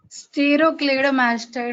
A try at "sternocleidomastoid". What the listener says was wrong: Sterno, not stero.